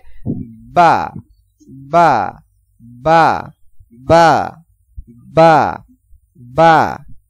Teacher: যেমন বা, মানে প্রথমে দুই ঠোঁট মিলবে, এরপরে হালকা ভাবে উচ্চারণ হবে